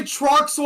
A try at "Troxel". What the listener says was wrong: Because you were making it sound like that there was an E in the middle of there. When there's no E. Troxel.